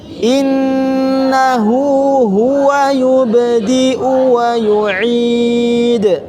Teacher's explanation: Innahu ha bukan di hidung, di tenggorokan.